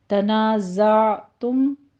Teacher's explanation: تنا میں الف مدہ، زا میں زئی کی آواز سیٹی کے ادا کرتے ہوئے آگے عین کو وسط حلق میں لے جا کے سٹاپ کرنا ہے